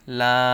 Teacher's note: খারা জবর আছে তাই এক আলিফ টেনে পড়তে হবে। এই খারা জবরটা হচ্ছে লামের উপরে।